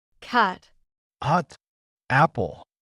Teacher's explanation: in cat the short a sound like in the word cat requires you to open your mouth wide and keep your tongue low